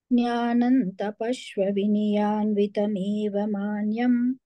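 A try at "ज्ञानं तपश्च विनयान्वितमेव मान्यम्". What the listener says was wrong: Tapashva. I heard Tapashva. Now it is Tapascha.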